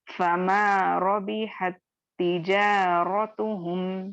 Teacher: लेकिन यहाँ पे इदगाम की वजह से क्या होगा, जो पहला ता साकिन है, ये जो ए वाला जो, ये क्या होगा, ता मुशद्दद में मर्ज हो जाएगा और आप पहले साकिन को बिल्कुल नहीं पढ़ेंगे बल्कि ता मुशद्दद वाले ता को पढ़ेंगे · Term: इदगाम सगीर